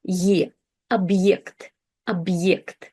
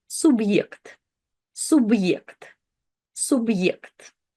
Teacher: And if we didn't have the hard sign, it would sound more like e. But when we have the hard sign, it introduces this kind of like short pause into the word, and we restart the letter ye, the vowel ye, with its full sound